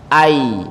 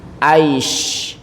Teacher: ngucapin huruf jim sama shin sama ya itu posisi lidahnya sama, ya, hampir sama.